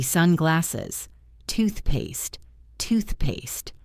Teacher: Punch the first word. Relax on the second. This creates that native stairstep melody.